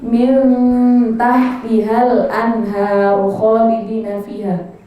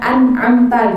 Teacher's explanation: Nah, nun mati kan min, tulisannya kan min tahtiha gitu kan. Nun mati di situ kalau ketemu ta, dia cara bacanya samar-samar. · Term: ikhfa